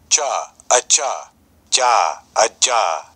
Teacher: In this situation, all these sounds on the soundboard are unaspirated. Aspiration is sort of an extra effect you can put onto a consonant, so in this soundboard, everything will be unaspirated that you hear.